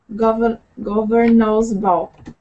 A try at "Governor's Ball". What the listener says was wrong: Good. Thank you.